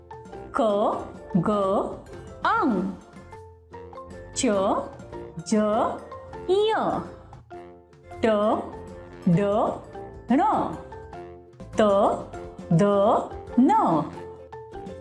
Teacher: 1 अल्पप्राण व्यंजन non aspirated consonants, अल्प का अर्थ है थोड़ा या कम तथा प्राण का अर्थ है प्राणवायु अर्थात श्वास। जिन व्यंजनों के उच्चारण में श्वास कम मात्रा में बाहर निकलती है तथा जिनके उच्चारण में हकार की ध्वनि सुनाई नहीं पड़ती, उन्हें अल्पप्राण व्यंजन कहते हैं।